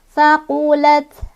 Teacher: Taknya ini punya sifat hamas, jadi ada udara keluar. Jadi huruf hamas ketika sukun lebih kelihatan ya, ada udaranya.